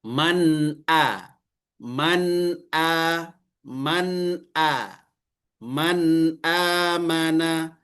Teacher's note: Secara bacaan hukum maka izhar dibaca jelas tapi melalui sifat maka ada dengungnya. Kenapa? Karena ada nun sukun atau tanwin yang bertemu dengan huruf halqi.